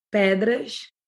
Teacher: Oh, you did like an SH sound there.